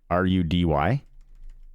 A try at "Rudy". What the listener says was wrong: Rudy. Sounds like you're saying with a T.